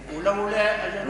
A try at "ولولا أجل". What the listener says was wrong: ولولا، مش لولا، ولولا.